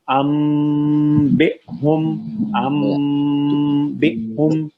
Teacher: نون ساکن کے بعد حرف با ہے، ساؤنڈ نون کی میم میں بدل دیں گے